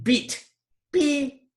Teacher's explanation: Your tongue is pretty high in your mouth. So it's a high vowel.